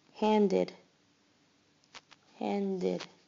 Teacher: Notice it seems to have an id syllable at the end.